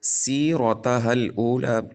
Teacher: را کے اوپر زبر آنے کی وجہ سے را کو پر پڑھیں گے، ہا کو لام کے ساتھ ملائیں گے، درمیان میں الف اضافی ہے، یہ نہیں پڑھا جائے گا۔